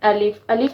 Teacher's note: الف منہ کے خالی حصہ سے ادا ہوتا ہے۔ جو ہمارے منہ کے اندر خالی حصہ ہوتا ہے نا اس جگہ سے الف ادا ہوتا ہے۔ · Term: مخرج